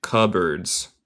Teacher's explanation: no se dice el P